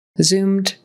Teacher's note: Again, it's a Z. Zzz, voices on.